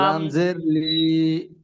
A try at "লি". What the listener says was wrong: লি টান হচ্ছে কেন? লি টান দেওয়া, লি তো যাব জের আছে, তাই তো? টান দিয়ে পড়তে হয় কি? জবর জের পেশকে হারাকাত বলে, হারাকাতকে তাড়াতাড়ি পড়তে হয়, টান দেওয়া নিষেধ, এগুলো শুরু থেকে পড়ানো হয়েছিল কি?